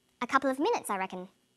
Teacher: falling tone in english statements usually end in a falling tone the falling tone at the end tells the listener that the statement is finished